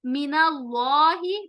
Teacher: इसमें जलाला लाम का मोटा होगा, नून के ऊपर जबर आने की वजह से